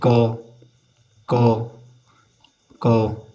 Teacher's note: क बोलने पे पीछे से अ की ध्वनि आपको सुनाई दे रही होगी। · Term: अ स्वर